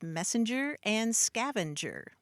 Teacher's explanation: So the N just is a phonetic intrusion. There's no etymological source for it.